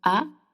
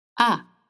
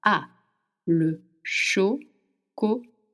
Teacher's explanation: Chocolat. Again, the sound A in French is high pitch. You want to open your mouth wide. A. The tongue is in the back of your mouth, not touching your teeth and the bottom.